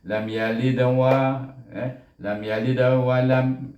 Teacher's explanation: Apabila huruf dal mati di tengah-tengah kalimah, dia juga menjadi, kita kena hukum qalqalah, tetapi baca qalqalahnya dengan sughra, iaitu dengan lebih rendah daripada qalqalah kubra. Tarafnya lebih rendah, iaitu lam yalid.